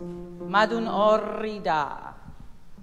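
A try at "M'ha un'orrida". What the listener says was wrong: okay, better, better than what you first did, but it can be better. Because immediately when you had the O vowel, you went back. So think that mat position, M-E-H position. Okay, so we have to change the vowel. We have to change, just to go back to mat.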